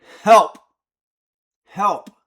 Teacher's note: The word help contains the full dynamic range of the microphone. You've got the soft H sound, the huh, that's the quietest. And then you've got the puh, which is the plosive.